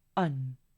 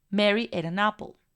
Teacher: no estoy enfatizando en este caso el artículo on. Es por eso que estoy reduciendo su sonido y suena como la schwa